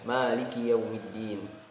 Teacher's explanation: Misalkan kita membaca dengan riwayat Hafiz dengan qiraat Imam Asim ya, dengan jalur Asy-Syatibiyah, maka kita membaca Maliki Yaumiddin dibaca panjang mimnya